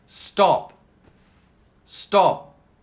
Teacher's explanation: You don't hear the P so much, do you?